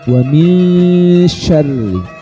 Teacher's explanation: Kalau sin itu bunyinya s nah sedangkan syin nah ya secara sifat syin itu ini memiliki sifat yang namanya tafasyi atau nyebarnya nafas